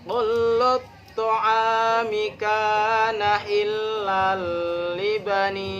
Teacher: Ni-nya itu dibaca panjang. Panjangnya itu 5 harokat.